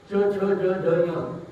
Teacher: जिभेचा मागचा भाग टाळूच्या मागच्या भागाला लागतो.